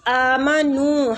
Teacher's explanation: حمزہ کے اوپر کھڑی زبر ہے تو اس کو کھینچیں گے ، نو کے آگے وہ مد ہے، نو کو بھی کھینچیں